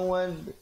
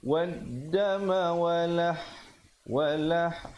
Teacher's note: Beza, sahabat-sahabat lihat di situ al perkataan al maitata dengan adam ada hamzah wasal diikuti lam yang bertanda mati pada perkataan maitata, manakala pada perkataan dam itu, wadam itu, lamnya tidak ada tanda mati. Lamnya tidak dibunyikan, terus dimasukkan ke dalam dal yang bersabdu. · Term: lam syamsiah